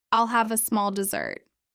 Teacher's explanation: Dessert has stress on the second syllable.